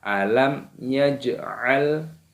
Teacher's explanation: jamnya sukun dibaca qalqalah, dipantulkan suaranya, lamnya sukun.